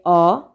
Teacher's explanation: নিম্নমধ্য অর্ধবিবৃত পশ্চাৎ ধ্বনি হচ্ছে অ